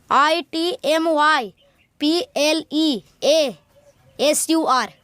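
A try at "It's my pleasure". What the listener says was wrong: प्लेजर, ठीक है। Word को अलग अलग करके बोलना चाहिए, ठीक है।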